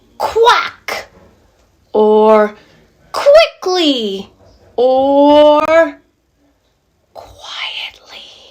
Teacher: the sound is coming from the back of our throat just like c and k